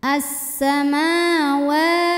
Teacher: kemudian ada hukum thi muqar karena ada yang berbaris fathah panjang cara bacanya dipanjangkan mimnya dua harakat